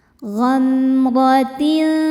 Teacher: Fi ghamratin. Ro dibaca secara tafkhim karena berharokat fathah. Cara bacanya ditebalkan.